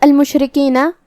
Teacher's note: کلمت المشرکین یہاں حرف الشین ہے اور اس پہ جزم ہے. ہم شین کو ظاہر کریں گے اور اسے زبان اور اوپر کے تالوں کے درمیان سے ادا کریں گے. را کا حکم ہے ترقیق کیونکہ اس کے نیچے زیر ہے، مطلب ہم را کو ہلکی آواز میں پڑھیں گے.